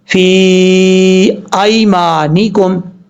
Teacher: فی ایمانکم، فا کے بعد جو یا ہے یہ یا مدہ ہے. ایک الف، 2.5 الف کے برابر یا 3 الف کے برابر آپ اس کو لمبا کریں گے، کیونکہ یا کے اوپر جو مد ہے یہ مد منفصل ہے، اور مد منفصل کی مقدار 2.5 سے 3 الف کے برابر لمبا کرنا ہوتی ہے.